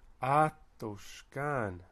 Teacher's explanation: You notice that the stress is atoshkan. So it's a third from the end is the high stress, then the secondary stress is on the final syllable